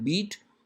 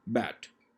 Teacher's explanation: means just going upward so there will be less space so tongue will be considered high in beat and low in bat